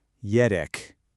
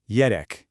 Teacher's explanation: You can kind of hear that R roll just a little bit.